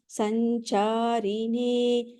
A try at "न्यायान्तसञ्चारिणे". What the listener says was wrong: Bhagini, in certain places where there is no Mahaprana, where there is an Alpa Prana, I could hear slight Mahaprana sounds, like in the third line, the last word, as well as the fourth line in the second word. So if you can please keep that in mind, all right?